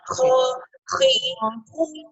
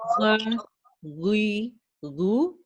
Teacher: اچھا خا میں تھوڑی سی اور سنورنگ آئے گی. خا اور غین کا فرق یہ ہے کہ دونوں ایک جگہ سے نکلتے ہیں, دونوں ہیوی ہیں بٹ خا ہیز اے لٹل سنورنگ ساؤنڈ